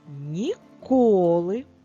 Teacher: наголос на другому складі на звук о